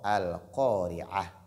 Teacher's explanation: Qaf est emphatique. On doit donc faire ce qu'on appelle at-tafkhim.